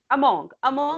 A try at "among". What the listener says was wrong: Among. Among. Yes, it's pronounced like the letter U instead of the letter O. Among.